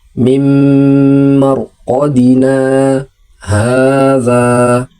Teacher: Jadi pas di kalimat na itu kita berhenti sebentar, kita tahan nafas kita seukuran satu harakat tanpa melepaskan nafas dan bacaan terus disambung di kalimat hadza tanpa membuang napas. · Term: diam sejenak